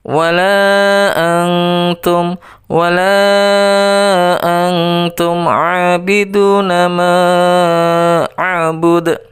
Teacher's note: Antum itu dibaca dengung, dibaca ikhfa, ya, tidak boleh dibaca jelas